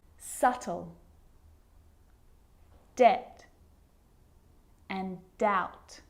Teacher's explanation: So see, in all of those examples, my lips aren't closing and coming together to form the B sound. I'm just pronouncing the T. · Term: silent